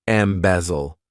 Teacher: this verb has three syllables and the stress is on that second syllable